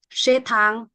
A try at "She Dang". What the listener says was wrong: Dang, not Tang. Dang. She. Dang.